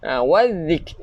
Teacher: Hujung lidah kita keluarkan sikit untuk zal.